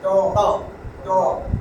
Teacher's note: জিহ্বার আগাটা ত সামনে দুই দাঁতের গোড়ায় লাগবে